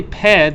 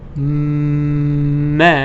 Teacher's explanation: of the mouth okay but when you say um the the the air goes out of the nose that's the difference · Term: nasal sound